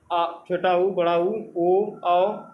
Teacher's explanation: जिनको बोलते समय मुख वृत्त के आकार का हो जाता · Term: वृत्ताकार स्वर